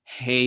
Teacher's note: a very very back of the throat very open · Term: h sound